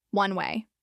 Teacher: This is pronounced as 2 words with equal stress.